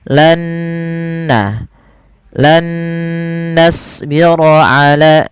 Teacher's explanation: idgham itu memasukkan nun yang pertama kepada nun yang kedua disertai dengan gunnah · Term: idgham bi gunnah